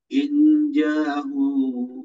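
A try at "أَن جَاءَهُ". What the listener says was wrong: Anja, ang bukan ing, anja.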